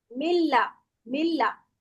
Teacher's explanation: यहां पे नून के बाद लाम है तो हम नून नहीं पढ़ते